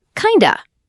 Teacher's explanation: Kind of becomes kinda. The D and the of blend together. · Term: reduction